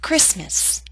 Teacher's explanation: Christmas is one of those words in English that is written with a t but we don't pronounce it